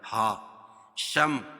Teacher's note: یرو را کو پور پڑھیں گے کیونکہ را کے اوپر زبر ہے، اور فی یا مدہ. ہا شم میم ساکن کے بعد میم اور با کے علاوہ کوئی اور حرف آئے تو اظہار شفوی ہوگا، اس کو ظاہر کر کے پڑھیں گے